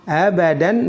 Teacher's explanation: Dipanjangkan 2 harokat dan diganti menjadi fathah biasa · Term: mad iwad